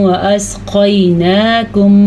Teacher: موٹا قاف اور نون کی کھڑی زبر کو ضرور ادا کرنا ہے. یہاں پہ ہمارے پاس ایک اسپیشل قاعدہ ہے.